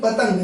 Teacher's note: अगर हमने बोला पन, तो अगर हम बोले पतंग, जैसे हमने कोई शब्द लिखा पतंग, अब पतंग शब्द में ये जो अन है, अनुस्वार है, ये ता वर्ण के ऊपर लगा है भैया, और ता वर्ण के उच्चारण के बाद ही इसका उच्चारण हो रहा है